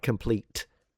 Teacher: it's this very dental t